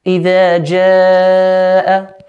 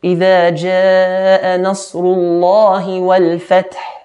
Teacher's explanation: Idha jaa, four or five counts.